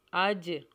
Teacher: اج قلقلہ ہوگا اج کیونکہ جیم کے اوپر سکون ہے